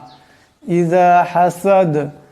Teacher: এখানে দমসালে দাল সাকিন হয়ে যাবে এবং আওয়াজটা টক্কর খাবে।